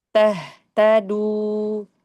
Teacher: du jangan terlalu dinaikin lidah belakang du. Turun lagi.